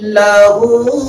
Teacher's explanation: الٹا پیش ہے جو واو مدہ کے برابر ہوتا ہے، کھینچ کر پڑھیں گے